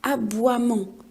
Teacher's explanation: on n'a pas prononcé le E, on a prononcé que le wa. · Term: lettres muettes